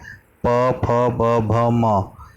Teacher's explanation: जब आप बोलेंगे तो आपके दोनों होंठ एक दूसरे को छूते हैं और जिह्वा होंठों की ओर आने का प्रयत्न करती है। तो इन वर्णों के उच्चारण में होंठों का, ओष्ठ का महत्व है, ओष्ठ की आवश्यकता होती है, इसलिए इन वर्णों को हम क्या कहते हैं? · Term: ओष्ठ्य